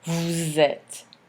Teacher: you can hear a z between the subject pronoun and the verb être. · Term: liaison